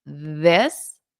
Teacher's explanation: I can see my tongue between my teeth.